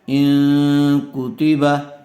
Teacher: نون ساکن کے بعد کاف آیا ہوا ہے، اس لیے غنہ کے ساتھ اخفا کر کے پڑھیں گے